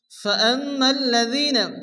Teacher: মিমের উপর তাসদীদ মিম গুণ ওয়াজিব